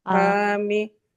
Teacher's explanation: Nah, ro sukunnya harus tebal